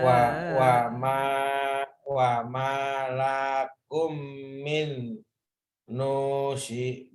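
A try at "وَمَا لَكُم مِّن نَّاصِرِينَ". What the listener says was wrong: Bukan nusirin, nasirin. Wa ma lakum min nasirin.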